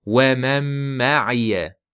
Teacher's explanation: Bu yerda va man ma'iya qilib nunni bildirmang. Nun bildirilmaydi.